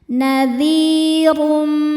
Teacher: Huruf ro dibaca secara tafkhim karena barisnya di atas yaitu dommah tanwin. Cara bacanya ro ditebalkan.